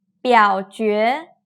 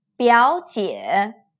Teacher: The ones on the left are third tone plus second tone, while the ones on the right are two third tones.